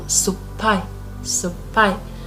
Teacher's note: If we have su and pai, the P will become double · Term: double consonant